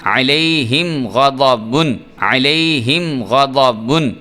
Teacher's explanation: میم ساکن کے بعد غین، یہاں پہ بھی غنہ نہیں کریں گے